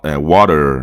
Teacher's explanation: essa vogal fraca praticamente vai substituir o R do americano